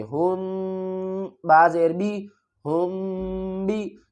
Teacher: بعد با آ گیا ہے، تو یہ ایک رول ہے کہ جب بھی میم ساکن کے بعد با آئے گا تو ہم میم کے اوپر غنہ کریں گے